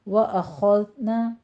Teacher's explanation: وَأَخَذْنَا خوا پر ہے، دال باریک رکھنا ہے، دال کے اوپر سیٹی کی آواز بھی نہیں آنی چاہیے